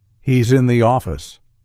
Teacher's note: listen to how the S sound at the end of he's becomes a z sound linking to in